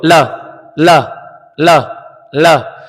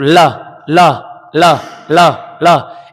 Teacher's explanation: सर ल, अब ल तो बोलो, ल ल ल ल, यानी होठ के इधर से यानी दाया बाया दोनों साइड से हवा निकल रही है